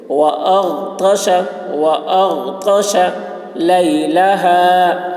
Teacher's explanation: غین کی آواز موٹی ہوگی، حلق سے ادا کریں گے اور غین میں قلقلہ نہ ہونے پائے · طا کی آواز موٹی ہوگی، شین کی آواز سیٹی جیسی ہوگی